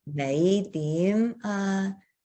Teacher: the fifth and the second tone are both rising. So it's 你點啊? It's just going right up the scale.